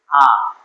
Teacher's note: আ স্বরধ্বনিটি উচ্চারণের সময় জিহ্বার সামনে বা পিছনে যায় না, কেন্দ্রীয়ভাবে অবস্থান করে বলে একে কেন্দ্রীয় স্বরধ্বনি বলা হয়